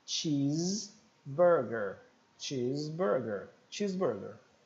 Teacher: uma mistura do som do T que a gente já viu com o som do X